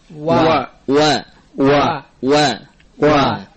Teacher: hendaklah dihindari ya adanya ghunah pada saat pengucapan wa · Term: huruf wau